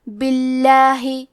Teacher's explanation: لہذا ہمیں لفظ الجلالہ مطلب کلمت اللہ کے لام کو ترقیق سے پڑھنا ہے، مطلب ہم حرف اللام کو پتلی آواز میں پڑھیں گے، باللہ۔